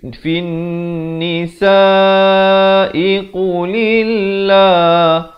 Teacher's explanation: Di sini alif lam syamsiah, jadi berarti fa baris bawah terus naik di atas nun dengan kadar dengung 2 harakat.